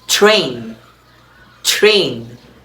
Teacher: Post-alveolar before R, for example, train, train. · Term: post-alveolar allophone